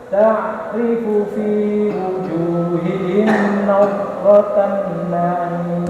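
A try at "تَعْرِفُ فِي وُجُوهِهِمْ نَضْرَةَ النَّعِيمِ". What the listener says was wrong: Oh, tanya, dengungnya ya kurang lagi. Nadratan na'im.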